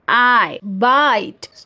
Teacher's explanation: देखिए, वर्ड है बाइट, ठीक है, बाइट वर्ड है, तो इसमें जो वोवल साउंड है आई, तो इसे हम जब बोलते हैं तो हमारा पूरा मुंह खुला रहता है। Okay, starts from open front position and moves towards ई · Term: diphthong